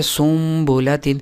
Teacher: نون ساکن یا نون تنوین کو میم سے بدل کر غنہ اور اخفا کے ساتھ پڑھا جائے گا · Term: اقلاب